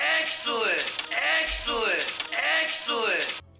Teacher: when they say excellent, that's a lowered dress vowel